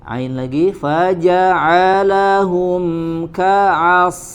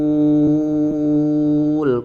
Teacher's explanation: Ka'asfim ditahan ya, tanwin bertemu dengan huruf mim.